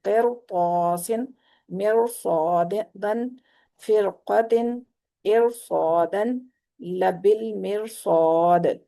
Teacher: را ساکن سے پیچھے زیر ہونے کے باوجود را جو ہے وہ پر پڑی جا رہی ہے۔ تو اس رول کو بھی یاد رکھنا ہے کہ را ساکن سے پیچھے اگر زیر ہے اور آگے پر حروف ہے میں سے ہے کوئی، تو پھر را پر پڑی جائے گی۔